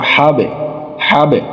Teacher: এই যে বা একটা বাড়ি খায়, এই বাড়িটা হচ্ছে কলকলা